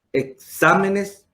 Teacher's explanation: porque se carga la voz en la antepenúltima sílaba y siempre lleva acento. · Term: esdrújula